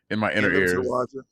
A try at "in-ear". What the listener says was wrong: love adding adding extra word extra syllables